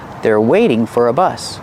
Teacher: we hear the pronunciation of four change to fur fur because it's not a stressed word